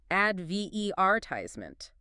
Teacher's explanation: We tend to stress the second syllable, advertisement.